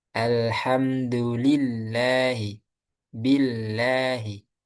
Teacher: ketika harakat sebelumnya didahului kasrah. Alhamdulillahi billahi itu lamnya dibaca tipis.